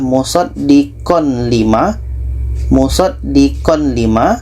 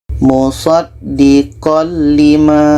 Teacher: masukkan ke la yang asal Bacanya adalah musaddiqon lima musaddiqon limaah tanwin kita masukkan ke lam